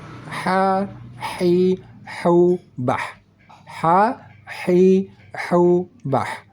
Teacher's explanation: Sama-sama kita baca di tengah kerongkongan. Sama-sama kita baca ada keluar angin halus dari tengah kerongkongan. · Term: huruf ha